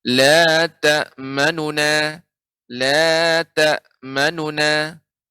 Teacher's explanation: harokat dhammah nu dibaca tidak sempurna. Jadi ketika membaca nu, ya, itu, ya, setengah harokat, ya, tidak sempurna pengucapannya. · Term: raum